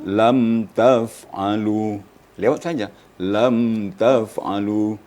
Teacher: sudah jelas mim mati langsung pindah ya boleh dikatakan satu ketukkan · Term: izhar syafawi